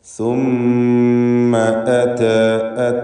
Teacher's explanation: സുമ്മയിലെ മീമിനെ മണിക്കണം. മീം മുശദ്ദദ, അതിന് 2 ഹറക്കത്തിൻ്റെ അളവിലുള്ള മണിക്കൽ കൊടുക്കുക